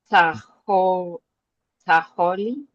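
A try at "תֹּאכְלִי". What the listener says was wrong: There's a O on the tav there. Tochali. And that's kamatz katan.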